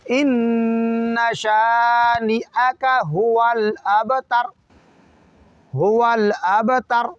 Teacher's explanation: دوسرا آخری 2 حرف تا اور را، اس میں تر ہے نہ کہ طور ہے، تا باریک پڑھنا ہے نہ کہ تو پڑھنا ہے